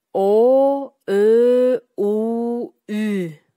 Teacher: Айтканда силердин эриндериңер кандайдыр бир чормоюнку абалда болду. Демек, буларды биз эриндүү үндүүлөр дейбиз.